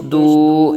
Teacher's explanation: ایک الف تک کھینچیں گے، واو ساکن سے پہلے پیش واو مدہ ہو رہا ہے